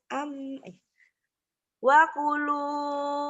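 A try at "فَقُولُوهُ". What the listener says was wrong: Fa, bukan wa, fa, f, fanta. Fakulu.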